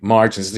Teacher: the stress on the first syllable is what you're saying